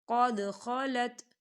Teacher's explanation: یہاں دیکھیے قد دال ساکن ہے، دال بل قلقلہ ہوگا